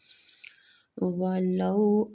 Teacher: وہ پہ ہونٹوں کو گول کریں گے، لو وہ لین ہو رہا ہے، تھوڑا سا کھینچیں گے